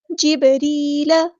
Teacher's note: جبریل، یہاں پہ آپ دیکھیں یا ساکن سے پہلے زیر ہے، تو یہاں پہ یا مدہ بن گئی ہے، تو مد اصلی کریں گے، ایک الف کے برابر لمبا کریں گے، اور بعد ساکن پہ یہاں پہ کلکلا ہو رہا ہے، را ہم باریک پڑھیں گے، لائٹ لیٹر ہے.